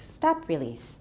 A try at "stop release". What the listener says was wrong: Yeah, your E is still too long.